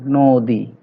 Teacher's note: যদিও নর সাথে অ আছে, কিন্তু আমরা উচ্চারণ পাচ্ছি নো, ওকার দিয়ে পাচ্ছি